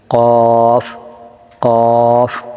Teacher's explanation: কফের মাখরাজটা কি? জিহ্বার গোড়া তার বরাবর উপরের তালুর সঙ্গে লাগিয়ে কফ উচ্চারিত হয়।